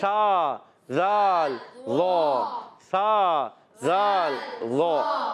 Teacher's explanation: زبان کا سرا, اوپر کے دانتوں کے اندرونی کنارے سے 3 حروف ادا ہوتے ہیں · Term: حروف لسویہ